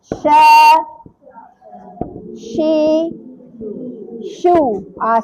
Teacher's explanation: Tafashi bermaksud ni lah hamburan udara. Kalau tak ada hamburan udara ni bukan shin. Dia jadi huruf lain.